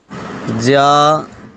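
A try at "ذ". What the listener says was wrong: اس کو صحیح کیجیے گا اور سختی کے ساتھ. جا کی آواز نہیں آنی چاہیے، زا کی آنی چاہیے.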